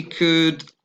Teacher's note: don't pronounce the L.